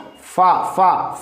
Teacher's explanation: ऊपर के दांतों के किनारे और निचले होठ के तर हिस्से